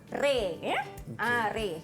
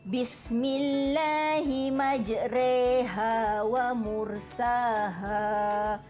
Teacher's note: imalah ni dia bunyi pertengahan antara bunyi fathah yang baris atas tadi dengan bunyi kasrah. Dia bunyi dia antara atas dengan bawah i.